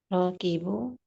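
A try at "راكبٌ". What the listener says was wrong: Rokibun. Kalau tidak ada alif lam, maka harus ada tanwin.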